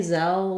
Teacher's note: the word zell just has three sounds the z the e like in red tent and our final l · So I would say Zelle, what's confusing about it is that the spelling doesn't really match what we might expect because we have this E at the end. But the word Zelle just has three sounds, the Z, the Eh, like in red tent, and our final L. So it might help you to think of the word sell because it's a very similar pronunciation.